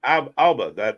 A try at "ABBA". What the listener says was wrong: ABBA, not Alba. You put a emphasis on the wrong syllable.